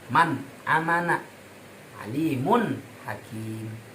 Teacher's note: Jadi suara nun dan tanwinnya harus jelas, jangan menyertai dengan dengung. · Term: idhar